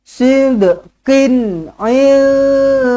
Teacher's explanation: Nun kosong bertemu dengan dal, ikhfa hakiki, dengungkan 2 harakat.